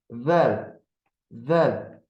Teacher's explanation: Dilin ucu həm üst dişlərin, həm də alt dişlərin ortasından bir çölə çıxır. Yəni dil görsənir. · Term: pəltək